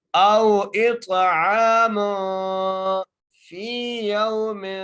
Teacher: میم کے اوپر تنوین ہے، 2 پیش ہیں، تو میم کو کیسے پڑھیں گے، غنہ کر کے پڑھیں گے